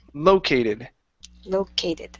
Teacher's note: The stress is at the very very beginning.